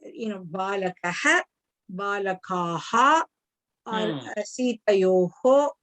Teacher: the pronunciation of the Ha sound for the Visargam follows the sound of the Akshara before that